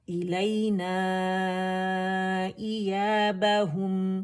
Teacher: तो जब खुश्क से आपस में मिलेंगे मीम के लिए तो इसमें जो तवस्सुत है पार्शियल फ्लो आवाज़ का वो आपको सुनाई देना चाहिए